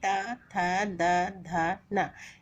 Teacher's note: इन सभी ध्वनियों को बोलते समय जीभ हमारी दांतों को स्पर्श करती है। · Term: दंतव्य